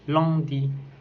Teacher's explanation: C'est une voyelle antérieure et mi-ouverte, arrondie et nasale. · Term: voyelle nasale